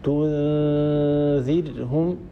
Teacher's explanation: بعد إعطاء هذا الحرف زمنه أهيئ مخرج الحرف الآتي بعد النون الساكنة وبعد التنوين وهو الذال هنا، والذال هي من طرف اللسان مع أطراف الثنايا العليا. لاحظوا أن المخرج مهيئ، تنذرهم، وصاحب هذا العمل الذي هو تهيئة المخرج صاحبه غنة كاملة الطول من الخيشوم. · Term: إخفاء